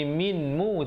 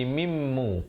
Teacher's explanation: Asalnya bunyi minmu, tapi di sini kena bunyi mimmu kerana nun tu terus masuk dia dalam mim yang bersabdu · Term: idgham bi gunnah